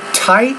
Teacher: pronounce the T with more air so it's not diet but tight tide tip dip so you · With the T, we got to put a little bit more aspiration in our vocal tract when we say it.